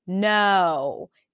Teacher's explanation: tip of the tongue comes up to touch the upper palate air comes out through the nose for the end · air comes out through the nose for the end no then the tongue comes down for the o vowel the jaw drops the back of the tongue goes up to create that oh back vowel sound and then you gradually close your jaw and your lips for